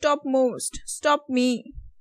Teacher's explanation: because M is the nasal consonant, because of which when you combine these two, then your P is also nasally released